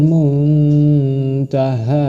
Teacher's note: nun mati bertemu dengan huruf Dal cara membacanya dengan samar dan dengung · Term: ikhfa